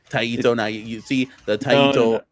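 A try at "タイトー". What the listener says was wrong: No, there's no E. There's no Taito.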